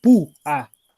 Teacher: Claro, según yo es grave porque tienes una vocal cerrada donde se carga la voz, en púa se carga la U, pu, a. Entonces por eso es obligatoriamente necesario separarlas y porque hay un hiato donde la voz cae en la vocal cerrada.